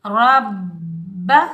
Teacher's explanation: रा हरूफ मुस्तआला में से आ रहा है तो रा को हम मोटा पढ़ेंगे। रा के ऊपर ज़बर, रा को हम बा मुशद्दिद के साथ मिलाएंगे, बगैर खींचे पढ़ेंगे। · रा के ऊपर ज़बर, रा को हम बा मुशद्दिद के साथ मिलाएंगे, बगैर खींचे पढ़ेंगे। बा मुशद्दिद को हम सख्ती और जमाव के साथ अदा करेंगे और मुशद्दिद हरफ हमेशा सख्ती और जमाव के साथ अदा किया जाता है और 2 बार अदा किया जाता है।